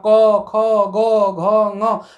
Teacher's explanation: जब हम क बोलते हैं तो हमारी जिह्वा पीछे की ओर खसक जाती है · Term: कंठ ध्वनियों